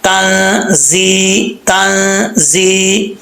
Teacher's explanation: ये ता जो दो नुक्तों वाला ये बरीक पढ़ा जाता है। और ता के बाद नून है, गुन्ना करेंगे यहाँ पे। जा में सीटी आएगी, तंजी, आगे या मद्दा है, एक अलिफ की मकदार लंबा करेंगे।